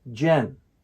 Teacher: is on the first syllable gen so it is pronounced genuine the first syllable gen is pronounced with a soft G sound like the J sound in genes